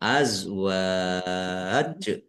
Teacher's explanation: Dibaca panjang dulu ya. Baru karena jim sukun qalqalah. Jadi panjang dulu baru diqqalqalahkan. Azwaj mad ad sukun bisa panjang enam harakat, empat harakat atau dua harakat. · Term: mad arid lisukun